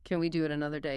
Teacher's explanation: Notice the rising intonation at the end.